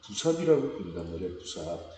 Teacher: 물론 우리나라 언어는 끊임없이 리을이 탈락을 해요. 탈락해서 없어집니다.